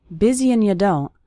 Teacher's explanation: That's very common for the word and to get reduced to just an n sound.